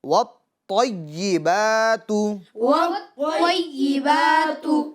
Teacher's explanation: یا بھی مشدد ہے تو اس پر بھی زور ڈالنا ہے، دباؤ ڈالنا ہے، اس کو بھی 2 مرتبہ پڑھنا ہے، ٹھیک ہے، وَالطَّيِّبَاتُ۔